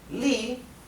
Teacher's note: se pronuncia con el tono que baja y sube que es el llamado el tercer tono